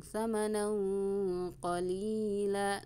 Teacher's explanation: Ikhfa hakiki tanwin bertemu dengan qaf atau fathah tanwin bertemu dengan qaf, samar dengan dengung